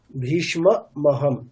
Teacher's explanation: আপনি বাংলাতে যেমন বলা হয় ভীষ সেরকম বলেছেন অর্থাৎ মটাকে আপনি স্কিপ করে দিয়েছেন